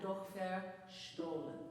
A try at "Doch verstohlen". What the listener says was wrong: Doch. Doch. Open your O vowel more. Doch. Barely touch the.